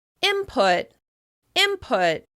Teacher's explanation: The /n/ sound changes into the /m/ sound so that it flows more easily into the /p/ sound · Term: assimilation